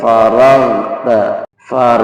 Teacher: itu jangan dipantul jadi jangan far atau jangan dipentokkan ya lidah pangkal lidahnya jangan ditempelkan ke tenggorokkan tapi harus mengalir di situ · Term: Gin